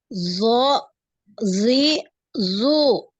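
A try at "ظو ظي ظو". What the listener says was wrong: Tebalkan lagi, dinaikkan ya. Lidahnya naik. Wo, gitu ya. Wo.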